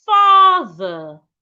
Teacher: Remember that in the spelling of father, we have TH. So your tongue must be outside when you get to the TH. Also, when you get to the E and R sound, ensure that your mouth is not opened.